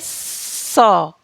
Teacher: सा को बोलते टाइम आप देखिए, स। सा का उच्चारण जीभ और दंत यानी कि दांत के बीच घर्षण के कारण होता है।